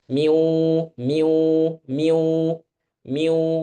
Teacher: Jadi ada suara dari hidung dengan jelas ya dan juga dari mulut.